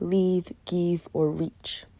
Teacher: The Spanish language does not have the phoneme for the untensed I sound, so as a result, when pronouncing words such as live, give, or rich, they're often pronounced with the tensed I sound rather than the untensed I